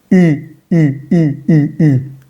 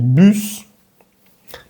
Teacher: Va a sonar algo así como U. Es como si tú pusieras la boca de U, normal en español, pero al interior, en la boca, vas a tratar de decir una I. Si dices I en español, I, mira tu boca, estás como sonriendo. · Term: la U francesa